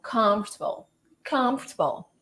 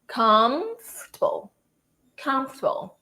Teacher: this one is comfortable, where the com is the strongest